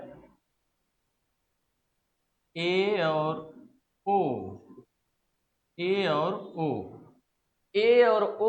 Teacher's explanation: एक है ए और ओ ए और ओ ए और ओ जो है ये अर्ध संवृत वर्ण है। ए और ओ इसके उच्चारण में जो है संवृत से मुख थोड़ा सा अधिक खुलता है। थोड़ा सा ज्यादा खुलता है।